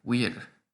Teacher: the V in Latin really was pronounced like a W in Roman times